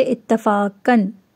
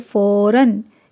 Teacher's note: تنوین میں نون کی آواز پیدا ہو جاتی ہے، یعنی کہ آپ کے ناک میں نون کی آواز پیدا ہو جاتی ہے